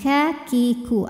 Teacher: ketika kafnya sukun maka anginnya keluarnya belakangan setelah keluar suara wak kalau kafnya hidup barengan ka ki ku angin dan suaranya barengan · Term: sifat hams